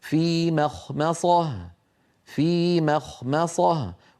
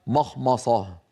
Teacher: القارئ ينطق ميم مرققة، خاء مفخمة، ميم مرققة، صاد مفخمة. الأمر فيه تناوب وبحاجة إلى يعني تمرين وتدريب، لكنه بعد التدريب يأتي صحيحا هكذا: في مخمصة، في مخمصة، وليس مخمصة.